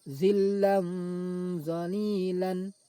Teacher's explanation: suara tanwin dibaca samar antara izhar dan idgham lalu didengungkan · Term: ikhfa